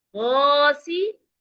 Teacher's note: الف حرف مدہ ہے کیونکہ اس سے پہلے والے حرف غین کے اوپر زبر ہے. अलिफ मा कबल मफ्तू हर्फ मद्दा होता है, इसे हम 2 सेकंड लंबा करके पढ़ेंगे